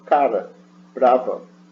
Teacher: a ponta da língua bate rapidamente, que é uma vibrante simples